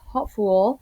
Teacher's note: The primary stress remains on the first syllable.